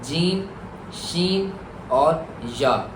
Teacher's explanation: जबान का जो दरमियान जब ऊपर के ताल्लु से लगे तो उससे तीन हर्फ अदा होते हैं। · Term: सातवें मखरज